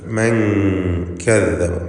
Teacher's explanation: ഇഖ്ഫാ ഹഖീഖി എന്ന നിയമമനുസരിച്ച് നൂനിനെ മറച്ചു മണിക്കണം, അവ്യക്തമാക്കി മണിച്ചുകൊണ്ട് ഉച്ചരിക്കുക. മൻ കദ്ദബ, മൻ എന്ന് ക്ലിയറാക്കരുത്.